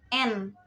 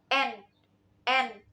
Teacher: Bunyi konsonan N juga disebut sebagai bunyi apikoalveolar, yaitu bunyi yang terlibat antara ujung lidah atau yang disebut sebagai apex dan ceruk gigi atas yang disebut sebagai alveolum. Selain itu juga bunyi konsonan N disebut juga sebagai bunyi nasal atau bunyi sengau, yaitu bunyi yang dihasilkan dengan cara menutup rapat-rapat arus udara dari mulut dan menyalurkannya lewat rongga hidung. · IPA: [ n ]